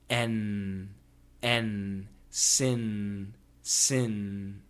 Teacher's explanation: The N is made when the tip of your tongue touches your alveolar ridge. That's the part that sticks out behind your upper teeth, inside the mouth.